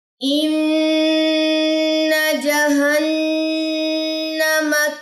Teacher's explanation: سورۃ النبا آیت نمبر 21 سے ان جہنم کانت مرصادا، نون مشدد کا اے غنہ یہاں پہ آئے گا اور نون مشدد کا اے غنہ یہاں پہ آئے گا، ٹھیک ہے، دو جگہوں پہ نون مشدد کے غنّے آئیں گے